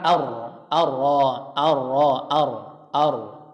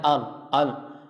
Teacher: Jadi huruf ra ini harus ada getaran ar. Jangan al. Ya, ar-rahman Allah, ar-rahman ar-rahmanir rahim, ar-rahman, tapi ar. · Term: getaran pada huruf ra